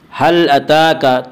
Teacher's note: تا کے اوپر کھڑا زبر ہے، کھڑا زبر کو ایک الف کے برابر کھینچ کر پڑھیں گے